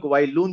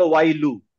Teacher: ওয়াই লুন ছিল তো হয়ে গেল ওয়াই লু কেন হলো because it is trying to merge with next word